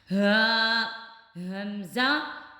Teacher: ह और हमजा ये मैंने पिछली वीडियो में बताया था कि ये दोनों हरूफ इंतहाई खलक यानी खलक के आखिरी हिस्से से जो सीने की तरह तरफ से हैं वहां से अदा होगा। · ہا، ہا اور حمزہ، یہ میں نے پچھلی ویڈیو میں بتایا تھا کہ یہ دونوں حروف انتہائی خلق یعنی خلق کے آخری حصے سے جو سینے کی طرف سے ہیں وہاں سے ادا ہوگا۔